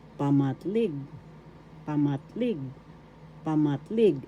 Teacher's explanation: first syllable pa second syllable mat third syllable leg the accent is in the third syllable